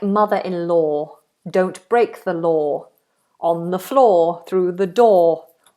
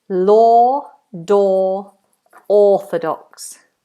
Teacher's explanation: Big space in the mouth, no movement, not o, which lots of people do. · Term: long vowel